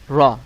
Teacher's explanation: করবেন করবেন র এখানে মাখরাজে বলা হয়েছে জিহ্বার আগার উল্টাপিঠ অর্থাৎ আপনার জিহ্বার আগা আগার আগার যে পিঠটা আছে এটাকে একটু উল্টা করে তারপরে উপরের তালুর সঙ্গে লাগাবেন র এরকম উচ্চারণ করবেন র র র 11 নাম্বার মাখরাজ বলা